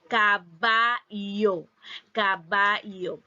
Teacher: En las regiones donde se produce el yeísmo, ambos sonidos se pronuncian de la misma manera, como un sonido fricativo palatal sonoro.